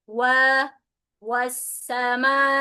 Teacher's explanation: Wa sama seperti dommah. Jadi memonyongkannya.